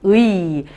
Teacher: 의 할 때 앞에가 짧으니까 얘를 반모음으로 보자.